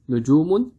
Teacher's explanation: so we are stretching the second u sound